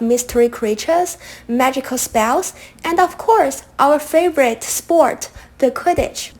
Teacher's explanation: our favorite sports quidditch now i like the tone you had rising tone after each item in the series